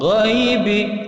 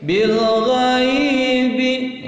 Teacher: Ghai mad itu panjang, lain lentur, sehingga bacaannya tidak usah tergesa-gesa, tidak usah langsung ghaibi, bil ghaibi ya, agak panjang karena mad lain, mad yang lentur